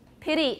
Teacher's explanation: now a lot of young people are saying pity as an american they're using a tap